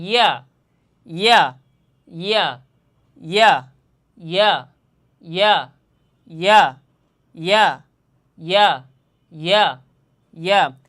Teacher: জিহ্বার মধ্যখান তার বরাবর উপরে তালুর সঙ্গে লাগাইয়া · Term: ইয়া হরফটা